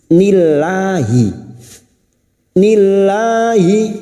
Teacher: lam jalalah yang didahului kasrah kita baca tarkik tipis